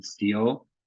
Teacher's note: we get the highest variant of short E